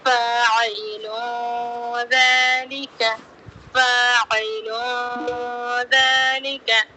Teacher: اور یہاں پر بھی لام کی تنوین کی آواز کو ایک الف کی مقدار ناک میں چھپاتے ہوئے ہلکا غنہ کرتے ہوئے پڑھیں گے